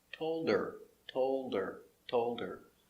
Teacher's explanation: the H is silent because it's not stressed.